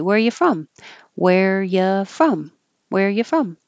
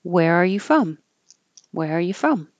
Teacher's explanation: but you can also change you to Y say um and you can drop the r completely if you want to be casual